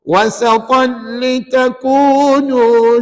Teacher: dibaca masuk tanpa dengung